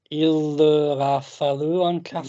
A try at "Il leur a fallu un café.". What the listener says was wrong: Well done.